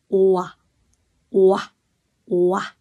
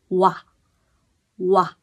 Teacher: ghép từ âm ù với âm a ch nên mọi người đọc nhanh chữ ô với chữ A là nó ra kéo từ chữ ô sang chữ a ù a ù đọc nhanh thì nó sẽ thành chữ wa